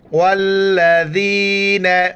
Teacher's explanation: جس لفظ کے اوپر یہ تین دانت والا ہے اس کو شد کہتے ہیں، وہ لفظ سختی کے ساتھ پڑھا جاتا ہے۔ ذال کے وقت زبان باہر نکالنا ہے